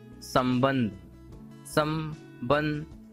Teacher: संबंध, संबंध, इतना कहोगे तो आपके मुख से आवाज ना आके बल्कि नाक से ज्यादा निकल रही है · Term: अनुस्वार